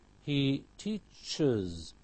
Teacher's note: The ch sibilant, so we have is